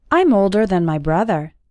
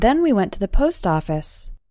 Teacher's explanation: in spoken English then spelled with an A and then spelled with an E often sound exactly the same when speaking fast